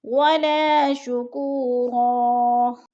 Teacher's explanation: ولا پہ پھر الف مدہ، شکورا، شکو پہ وہ مدہ ہے، رن 2 زبر تنوین کو وقف کی صورت میں ایک زبر میں بدل کر پڑھیں گے